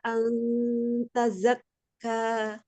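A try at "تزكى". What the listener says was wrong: Jangan tezak. Buka dulu, kasih harokat fathah. Tazak. Dibuka dulu fathah.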